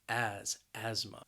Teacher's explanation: And again, this word, the spelling may not match up with the pronunciation because that ASTH, it's really pronounced as just like as, like a Z sound, as, asthma.